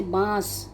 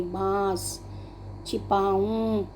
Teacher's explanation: जो अनुनासिक शब्द होते हैं इनके उच्चारण में नाक और मुंह दोनों जगह से ध्वनि का प्रयोग होता है